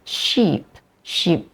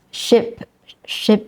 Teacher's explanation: so sheep is longer than ship